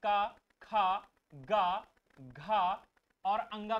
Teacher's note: उच्चारण के आधार पर व्यंजनों का भेद देखें तो कंठ, तालु, मूर्धा, दंत और ओष्ठ, वत् तथा काकल्य भी होते हैं। बेटा, कंठ से अगर हम बात करें तो कंठ से उच्चारण जो होते हैं का, खा, गा, घा और अंगा का उच्चारण होता है